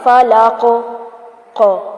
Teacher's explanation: فلاق last میں جو قاف آ رہا ہے اس کو بھی ہلائیں گے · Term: کلکلا